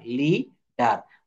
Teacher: এখানে consonant plus E এ plus consonant থাকলে এখানে ই এর উচ্চারণ দীর্ঘইকার হবে। ওখানে টোনটা একটু দীর্ঘক্ষণ রাখতে হবে।